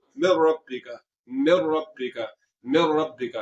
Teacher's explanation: आवाज को नाक में ले जाकर आपने लंबा नहीं करना, यानी कि गुन्ना नहीं करना · तो यहाँ नून साकिन के बाद रा आ गया, तो रा में इदगाम तो हो रहा है क्योंकि हमने रा को मुशद्दद कर दिया, तो नून की आवाज जो थी, जो नून था वो रा में मिल गया। तो यहाँ पर नून की आवाज को हमने नाक में नहीं ले जाना, तो ये इदगाम हो रहा है मगर यहाँ पर गुन्ना नहीं होगा।